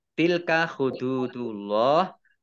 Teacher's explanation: Tilka hududullah dal domah wawu sukun mat tabi'i panjang 2 harokat. Allahnya dibaca tebal karena harokat di depannya domah. Lam fathah berdiri mat tabi'i panjang 2 harokat.